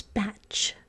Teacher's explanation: we don't say the T we say CH · we don't hear the t sound, it's not there.